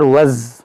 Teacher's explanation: دیکھیں زا مشدد ہے، دیکھیں واو زا زبر وز، دیکھیں آواز میں جھنجھناہٹ پیدا ہو رہی ہے، وائبریٹ ہو رہا ہے آواز